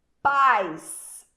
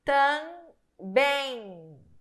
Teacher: O som sai pelo nariz, pelas fossas nasais. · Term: ditongo nasal